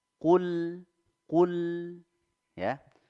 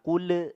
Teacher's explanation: ada lam sukun kita izharkan ya diizharkan dijelaskan jangan sampai ada pantulan tidak boleh mantul tidak boleh juga digunakan jadi betul-betul bersih Qul Qul Ya jadi